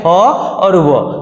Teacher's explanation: दंत और ओष्ठ की सहायता से बोलते हैं तो फ और व होता है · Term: दंत ओष्ठ